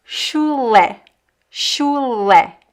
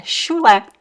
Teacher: Chulé. Because the CH sounds like sh, and the last syllable is le